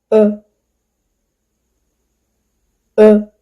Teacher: This sound /ə/ is called schwa. It is a mid central vowel and the lips are unrounded. The mouth is relaxed and this sound usually appears in unstressed syllable.